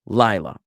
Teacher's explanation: the emphasis being on the first syllable